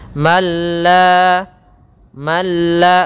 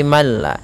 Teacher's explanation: Di sini ada hukum tajwid berupa idgham bila gunnah atau idgham ma'al gunnah, dan idgham di sini idgham kamil, yaitu apabila ada nun mati bertemu dengan lam, maka suara nunnya hilang mengganti menjadi suara lam, yang mana nunnya masuk kepada lam dan hilang nunnya menjadi malla.